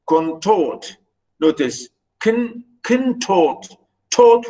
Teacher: Notice the noun is iamb, which is unstressed syllable followed by a stressed syllable